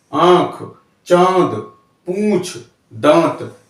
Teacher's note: ये स्वर मुख और नाक दोनों से बोले जाते हैं। इसको चंद्रबिंदु यानी चंदा बिंदी लगा करके दर्शाया जाता है, जैसे 5, आंख, चांद, पूंछ, दांत, यानी ये लगती चंद्रबिंदी, यानी चंद्रबिंदी वाले हवा कहलाते हैं हमारे अनुनासिक स्वर।